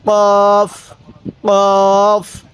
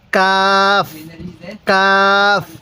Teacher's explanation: কফটা ধাক্কা দিব কাফটা সোজা করে পড়বো কোন ধাক্কা দিব না